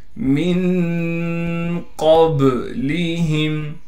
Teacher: میم کو نون سے ملائیں گے غنہ یعنی اخفا کے ساتھ